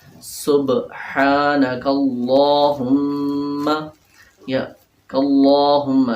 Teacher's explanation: لام جو ہے موٹا کرنا ہے